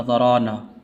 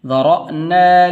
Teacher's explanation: ये रा के बाद हमज़ा है